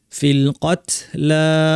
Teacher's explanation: কত বলার সময় তায়ের পর একটু বাতাস বের হবে।